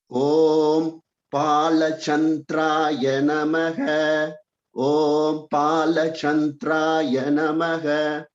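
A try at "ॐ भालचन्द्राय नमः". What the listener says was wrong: Good. Just try for more of the Mahaprana, pa in Pala.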